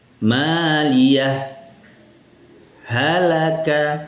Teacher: Dengan syarat apabila dibaca izhar maka membacanya harus diberi saktah sebentar atau diam sejenak